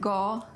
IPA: ɡɔ